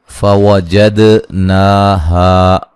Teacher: واو کو ادا کرتے ہونٹوں کو گول کرنا ہے